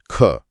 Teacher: हवा ज्यादा निकली। जोर लगा पर गले में कंपन अभी भी नहीं है। तो यह हुआ महाप्राण और अघोष।